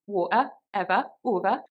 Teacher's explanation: words which would generally have a schwa sound at the end, such as ever, over, water, that has more of an ah sound in the Geordie accent